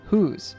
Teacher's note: Notice that the S in whose actually has a Z sound, whose. Also notice that drops the TH in that.